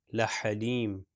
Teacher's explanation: یہ بھی ہا جو ہے مڈل پارٹ سے ادا ہوتا ہے